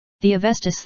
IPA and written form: əˈvɛstə (Avesta)